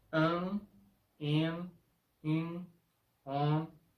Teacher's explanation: al final de una sílaba ellas nasalizan las vocales anteriores. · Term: sonido nasalado